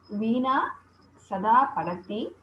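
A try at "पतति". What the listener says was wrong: Pattati, not Padati. Kada Pattati, Sada Pattati,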